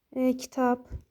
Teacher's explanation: Bunun qarşılığı P, yəni B P-yə keçir.